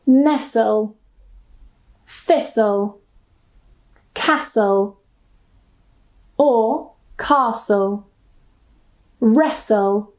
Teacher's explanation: when we have the spelling s l e s so we don't pronounce the t. Usually we don't pronounce the t.